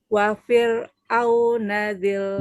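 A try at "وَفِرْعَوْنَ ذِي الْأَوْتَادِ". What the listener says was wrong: Bukan au tapi ain. Wa fir'auna dzil autad. Nanti dilatih ya huruf ainnya ya.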